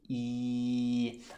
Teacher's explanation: in Norwegian, when we say E, we smile a little bit more, like this.